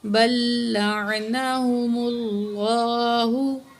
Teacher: لفظ اللہ سے پہلے پچھلے الفاظ پہ پیش ہے، اس لیے ہم نے لفظ اللہ کو موٹا پڑھا ہے